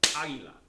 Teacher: put the stress in the beginning